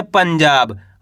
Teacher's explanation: अनुस्वार की मात्रा, यानी कि आधा ना का उच्चारण तेजी के साथ करेंगे। कैसे, पाम अनुस्वार की मात्रा पन, जामा की मात्रा जा, ब तो मिलके बन जाएगा पंजाब।